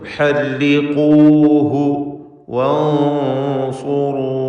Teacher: മണിക്കൽ തഫ്ഖീം വേണം, കാരണം സ്വാദ് ഇസ്തിഅലാൻ്റെ അക്ഷരമായതുകൊണ്ട് അതിന് മുമ്പിൽ വരുന്ന സാക്കിന താനൂനിൻ്റെ മണിക്കലിലും തഫ്ഖീമാണ്. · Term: ഇഖ്ഫാ ഹഖീഖി